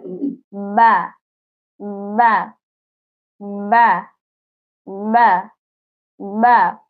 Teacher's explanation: পনেরো নং মাখরাজ দুই ঠোঁট হতে বা, ওয়াও, মিম উচ্চারিত হয়। বা ঠোঁটের ভিজা জায়গা হতে উচ্চারিত হয়। দুই ঠোঁটের ভিজা জায়গা এই জায়গা এই জায়গা বা বা বা বা বা।